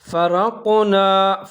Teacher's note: را کو موٹا کر کے پڑھنا ہے کیونکہ اس کے اوپر زبر ہے